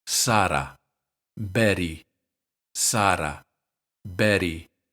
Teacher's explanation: in both cases it's just a tap with the tip of the tongue